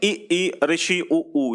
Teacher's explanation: संवृत का मतलब होता है जब मुंह जो है वो पूरी तरीके से ना खुला हो, बंद होने को हो